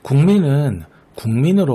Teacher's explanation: 국민은 국민으로 발음되고 기역이 뒤의 미음의 영향을 받아 이응으로 바뀌었네요. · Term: 비음화